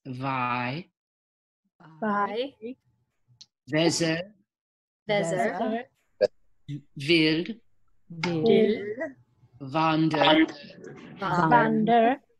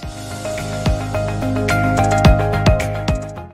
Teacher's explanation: The sound W becomes V. W as in wind becomes V as in vest.